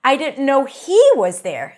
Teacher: when the word he is emphasized in the sentence, you got to use the H.